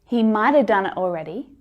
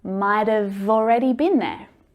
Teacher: If the word starts with a vowel following, then we hear that v sound.